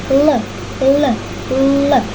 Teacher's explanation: Diucapkan dengan posisi ujung lidah bagian depan dan langit-langit keras tidak menutup penuh. Udara yang dikeluarkan melewati bagian samping. L, L, L. Pita suara bergetar sehingga menghasilkan bunyi suara.